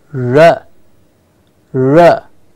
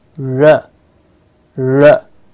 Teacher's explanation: the tongue is curling up in the mouth becoming a curl just behind the ridge above the teeth and the roof of the mouth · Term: curl of the tongue